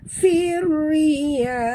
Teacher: masukkan bunyi fa terus ke dalam ra tanpa membunyikan alif lam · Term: idgham syamsi